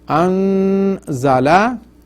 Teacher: An za is one of the huruf ikhfa. That's why you stretch noon. 3 haraka. Anzala minas sama'i.